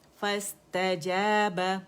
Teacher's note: اور حمزۃ الوصل گر گیا